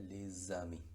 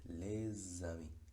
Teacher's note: la liaison es entre esa S y la A. La pronunciación sería les amis, sonido de S, les amis.